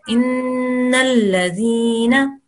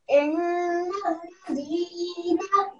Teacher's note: this is a nun guna, nun mushaddad. So you have to stop and make a sound from your nose for what, 2 seconds there.